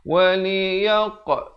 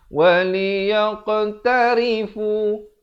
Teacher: Waktu berikan lantunan itu, bulatkan mulut. Barulah menghasilkan qa itu. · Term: qalqalah